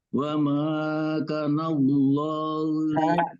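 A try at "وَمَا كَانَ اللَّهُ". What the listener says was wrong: Kaknya dua harokat kaknya.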